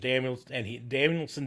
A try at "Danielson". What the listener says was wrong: No, you said Danielson. You added an extra hump to your end.